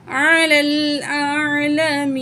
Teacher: یا می یا مد ہے 1 پوائنٹ کھینچ کے پڑھیں گے نون ساکن کر کے پڑھیں گے کیونکہ آیت مکمل ہو رہی ہے نون کی زبر ختم ہو جائے گی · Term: نون کو ساکن